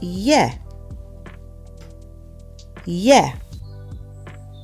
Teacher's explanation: So the E is pronounced like the E in bed. It's an open sound, not a closed one, like A.